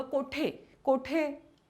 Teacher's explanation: कोठे कोठे असं म्हणताना पण किंचित नचा उच्चार होतो. तर पूर्वी हे अनुस्वार दिले जायचे, कारण थोडासा नचा उच्चार आहे त्यामुळे हे अनुस्वार असायचे.